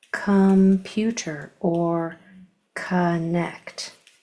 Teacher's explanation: Sometimes you're going to see C-O-M or C-O-N at the beginning of words, and they are pronounced with that O as a schwa. Ah. So this would be come and kun, as in computer or connect.